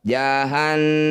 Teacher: Nun bertasdid, disebut bacaan gunnah musyaddadah. Bunyi nun dengungkan 2 harokat. Jahannama. Ketika dihentikan, huruf terakhir ma yang masih hidup kita sukunkan, matikan.